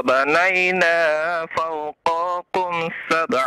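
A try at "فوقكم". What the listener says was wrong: Fauqakum. Qafnya jangan dipanjangkan.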